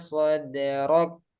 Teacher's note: Macet dulu suaranya, aliran suaranya tertahan, baru sisanya itu hamas. Soderok, nah itu syiddahnya.